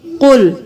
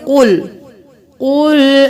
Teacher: کل کریں گے تو یہ باریک پڑھنا ہوگا، قاف کو موٹا پڑھیں گے